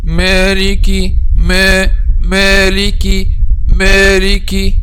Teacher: They make the sound of al-ghunna, and this is also one of the common mistakes.